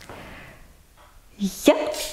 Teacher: Il se dit avec le dos de la langue et le palais dur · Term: semi-voyelle